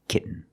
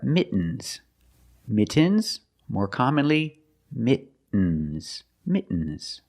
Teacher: when you make the stop T the tongue is up almost in the end position so you don't have to change much